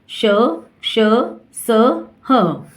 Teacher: इन व्यंजनों का उच्चारण करते समय वायु मुंह के विभिन्न भागों से रगड़ खाती हुई बाहर आती है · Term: ऊष्म व्यंजन